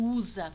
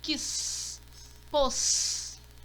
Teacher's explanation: Aqui eu tenho usa com o som de Z, z, e tenho S com o som de S forte, quis, pôs